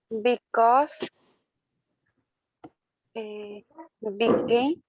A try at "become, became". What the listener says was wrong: Very good.